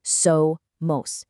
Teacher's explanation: For somos, really emphasize that first part, so, mos. And for son, it literally sounds exactly like the English word son, as in a parent's child, son.